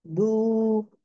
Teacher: बू में क्या होता है, टंग जो है ना, back of the tongue is raised